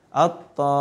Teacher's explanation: Karena mimnya ada tasydid, jadi gunnah.